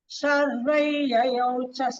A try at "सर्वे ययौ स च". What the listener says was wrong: Sharpau yayau sacha, not chasa.